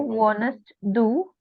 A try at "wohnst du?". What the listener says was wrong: Not wohnst, wohnst. See, there is no E.